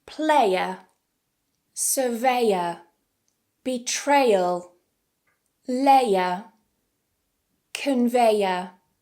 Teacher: this is a combination of /eɪ/ and /ə/ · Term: triphthong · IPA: /eɪə/